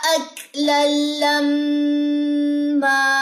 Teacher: میم مشدد کا غنہ اور اس کے بعد دو زبر کا وقف